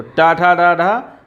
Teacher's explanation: ये कैसे हैं यह मूर्धन्य व्यंजन